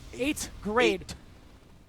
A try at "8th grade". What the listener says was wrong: You know how Yipe says death? That's how you have to say his name. There's no H. 8th grade.